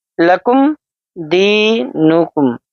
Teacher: میم کی آواز کو ہم تھوڑا سا بھی جھٹکا نہ دیں، تھوڑی سی بھی لوٹتی ہوئی محسوس نہ ہونے دیں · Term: اظہار